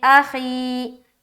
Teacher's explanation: یا ساکن سے پہلے زیر ہے، یا مدہ ہوگی، یا مدہ کو ایک الف کے برابر کھینچ کر پڑھیں گے ، جیسے اخی، ہی ہا کے نیچے زیر کی حرکت ہے،